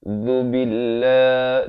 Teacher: Zu di hujung lidah. Zu billah. Dibacakan dengan nipis dua harakat.